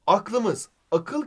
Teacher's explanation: Ak kirazının düşmesi Hocam şu an şimdi bak ünlü düşmesi aklımız akıl kelimesindeki ı düşüyor Ve aklımız oluyor